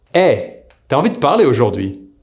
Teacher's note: See here TU AS became T’AS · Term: T apostrophe